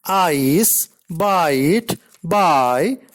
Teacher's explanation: I is a glide from a front open unrounded vowel to a centralized front unrounded vowel just above half close